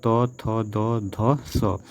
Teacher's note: नोक ऊपरी दांतों को स्पर्श करता है उसे हम दंत व्यंजन कहते हैं